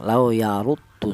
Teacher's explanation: untuk menebalkan huruf ro yang berharka domah menggunakan lidah bagian belakang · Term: tafhim